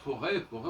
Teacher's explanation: on n'entend pas le T